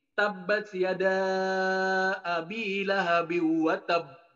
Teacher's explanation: jadi ketika di akhirnya itu ada tasdid disitu ditahan dulu baru memantul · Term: syidatul Qalqalah, syiddatul qalqalah